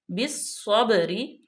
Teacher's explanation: بالصبری، اب با پہ ہم نے کلکلہ کیا کیونکہ با ساکن ما قبل زبر ہے یعنی کہ مفتوح ہے، تو با پہ جنبش دے کے پڑھیں گے، ہلا کے پڑھیں گے